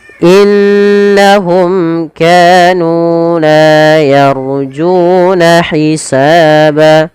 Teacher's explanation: Yaitu terjadi apabila seluruh ada huruf mim mati bertemu dengan seluruh huruf ijaiyah, maka ini kita namakan dengan bacaan izhar syafawi. Suara mimnya harus jelas dan tidak boleh tahan.